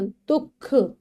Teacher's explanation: जो विसर्ग है वो आधे ह के समान ह की आवाज देता है।